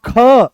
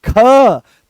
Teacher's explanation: जैसे ही ख बोलते हो तो पूरे कमर तक इसकी दम निकलता है और यहां से इस वाले हिस्से से ये उठ के चलता है। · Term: महाप्राण